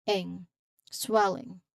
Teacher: a soft nasal sound where the G is often softened or almost silent, primarily represented by the N sound carrying the resonance. So ing, swelling.